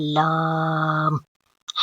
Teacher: یہ زبان کا کنارہ اور دواحق سے ثنایا تک کے مرسوڑوں سے ادا ہوتا ہے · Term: حروف طرافیہ